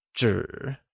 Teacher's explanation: where zhi is spoken with a falling, rising tone, which means paper